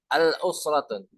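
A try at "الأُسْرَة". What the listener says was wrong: Good, mumtaz. Bagus ya.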